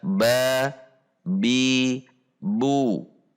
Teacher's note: Jadi saat bacaan pendek satu harokat harus dibaca satu harokat. Kemudian tidak menambahkan akhiran hamzah pada bacaan